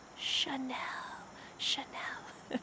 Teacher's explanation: This word has a CH, but we don't say ch. Instead, it sounds like shh, be quiet. Chanel.